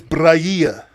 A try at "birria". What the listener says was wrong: No, you trying to roll your tongue. It's birria.